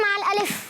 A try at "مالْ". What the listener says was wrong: مال الف کیسے ہوگا؟ جب آپ ہا سے بدل لیں تو ہا ہوگا نا. مال ہا, وقف بالابدال مال ہا.